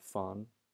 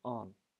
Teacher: FH in Irish is just silent. So now fawn becomes on.